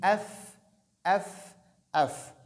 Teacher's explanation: il y a une seule lèvre qui travaille ici, qui doit fonctionner, celle inférieure avec l'extrémité des dents d'en haut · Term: fa